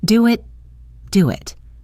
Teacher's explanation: And notice the linking in do it. To make it sound smoother, we can add a very small W sound in between do it, do it. When you say it quickly, you barely hear the W, but it helps connect the sounds smoothly.